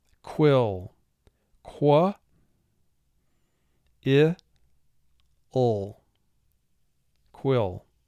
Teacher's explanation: QU in English represents the sounds K and W combined.